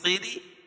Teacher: خیری خا کو پور پڑھیں گے خیری اور را باریک پڑی جائے گی. را کے نیچے زیر ہے.